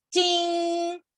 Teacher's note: because it's a first tone, flat tone, it will pronounce ting